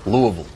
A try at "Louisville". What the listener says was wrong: Yeah, you need one more syllable. Louisville.